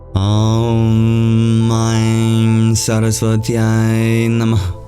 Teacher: And that H at the end is an expulsion of breath called a visarga. It is a release of the breath within.